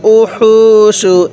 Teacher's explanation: এই হা উচ্চারণের সময় আমরা মুখ দিয়ে হালকা বাতাস বের করব